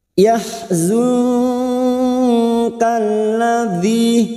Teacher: nun sukun bertemu Kaf ikhfa Hakiki kita samarkan bunyi nun sukun dan mendingung selama dua atau tig harakat yahadzi masuk k alif